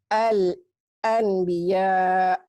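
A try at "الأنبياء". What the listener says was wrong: Yang betul bukan an, tapi bunyinya jadi M. Al-anbiya. Apa hukumnya? Kenapa? Bukan, tak ada kasrah situ. Bukan.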